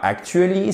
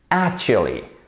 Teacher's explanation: Vous avez un accent tonique sur la première syllabe.